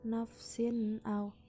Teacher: Lalu ada kata nafsin au, hukumnya izhar sebab huruf sin berharokat kasroh tanwin bertemu dengan huruf hamzah, dibaca jelas tidak berdengung sama sekali